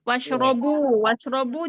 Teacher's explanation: ro di sini dibaca dibaca tebal ya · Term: ro tafkhim